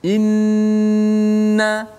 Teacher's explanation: hujung lidah kita itu letak betul-betul pada makhraj nun, dan lama kat situ. Inna kan lama. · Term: nun yang bersabdu